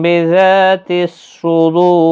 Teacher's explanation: دو واو مدہ ہے، اور را ساکن جب ہو جائے گا وقف کی صورت میں تو پر پڑھا جائے گا، کیونکہ را ساکن سے پہلے واو ساکن، واو ساکن سے پہلے پیش ہے، اس لیے پر پڑھا جائے گا۔ 3 سے 5 الف کی مقدار کے برابر کھینچ کر وقف ہوگا۔